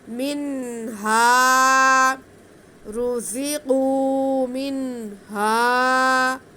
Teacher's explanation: نون ساکن کے بعد حرف ہلکی آ جائیں تو اظہار کا قاعدہ ہوتا ہے نون ساکن نون تنوین میں، تو یہاں پہ بھی ہم نون کی آواز کو واضح کر کے پڑھیں گے، اظہار کریں گے. آگے ہا کے ساتھ الف ہے، تو ہا پہ زبر ہونے کی وجہ سے یہ الف مدہ ہے، ہم ہا کی آواز کو کھینچ کے پڑھیں گے.